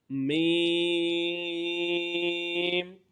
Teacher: दोनों होठों के खुश्क हिस्सा से अदा होगा · میم، دونوں ہونٹوں کے خشک حصہ سے ادا ہوگا